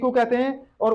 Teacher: हमारा इसमें मुंह जो है बंद रहता है, ज्यादा नहीं खुलता, बंद रहता है। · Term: संवृत स्वर